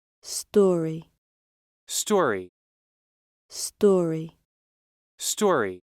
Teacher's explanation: the American story is shorter than the British story